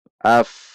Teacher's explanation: Hamzah berupa alif masuk ke fa sukun. Af. Tidak tertahan. Bukan ap. Perhatikan.